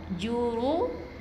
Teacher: Ra baris atas, ra baris depan kita baca dengan tebal. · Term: huruf ra yang tebal